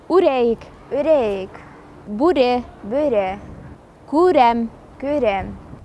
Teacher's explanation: Звук У надо произносить немного уже.